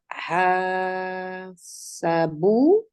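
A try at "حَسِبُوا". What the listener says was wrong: Hasibu, do not change on ain kalima.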